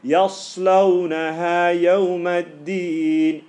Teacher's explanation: You can hear the sad has a slight whistle, yeah, and the sin and the zay.